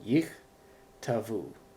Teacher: the first Shiva stops the syllable, it's not pronounced, but the second Shiva right next to it is pronounced. You vocalize that one, yich, tavu.